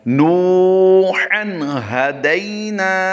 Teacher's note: नून वाव पेश नू को लंबा करके पढ़ेंगे, वाव मद्दा है। · आगे हा दो ज़बर हन की तनवीन के बाद हरूफ हल्की से हा आ गया, इसलिए हम यहाँ पर इजहार करेंगे, गुन्ना नहीं करेंगे।